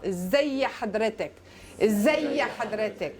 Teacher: So when you say it as one word, you get that little helping vowel.